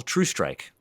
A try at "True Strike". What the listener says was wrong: It sounds like you're saying Drew Strike, and